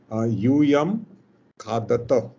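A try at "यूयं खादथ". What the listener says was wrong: A little bit Mahaprana pronunciation in the end. Try again.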